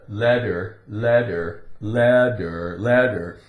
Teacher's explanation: It's very common for a T in the center of a word or inside a word to be pronounced with more of a D sound.